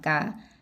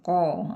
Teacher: Kaf sama kof beda. Ka tipis, ko tebal. Angkat pangkal lidahnya.